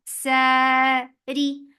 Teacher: Ra is light for kasra give e sound